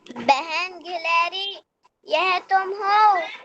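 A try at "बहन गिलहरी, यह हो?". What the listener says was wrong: यह तुम कहाँ लिखा है? तुम नहीं है यहाँ पर बेटा।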